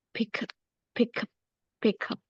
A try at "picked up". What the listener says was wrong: picked up. ya karena terakhirnya deh ya. Oh, kalau nggak ada ed-nya, pick up, yes, pick up. Tapi kalau ada ed-nya, picked up, right?